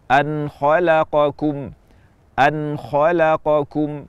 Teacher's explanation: tenggorokan Hamzah ha Ain ha gin dan Ko kita baca izhar baca jelas dari makhraj huruf nun tanpa tambahan kadar ghunah